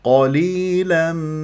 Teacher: القاف من احرف الاستعلاء تفخم مرتبه ثانيه لانها مفتوحه